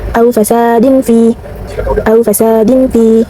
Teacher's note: Lalu juga ada ikhfa, yaitu terdapat tanwin bertemu dengan huruf fa. Cara bacanya suara tanwin condong ke huruf m.